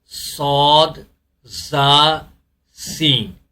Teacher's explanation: ان حروف کو ادا کرتے وقت آواز سیٹی کی طرح تیز نکلتی ہے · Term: سیٹی والے حروف